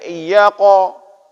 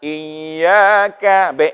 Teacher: Kalau qaf tadi tebal, maka ka ini tipis.